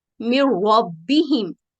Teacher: جیسے یہ مثال ہے ادغام کامل کی، من ربہم، اس میں نون ساکن کے بعد را مشدد ہے تو نون کی آواز کو بالکل ختم کر دیتے ہیں